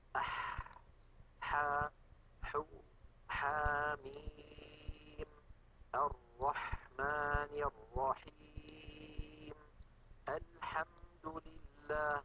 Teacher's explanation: انظروا إلى حرف الحاء كيف أن لسان المزمار يرجع ولكن قليلا، لا يرجع بالمقدار الذي كان يرجعه عند حرف العين، لذلك نطق الحاء أسهل من نطق العين.